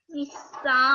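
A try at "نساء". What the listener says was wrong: A little bit longer. So nisa.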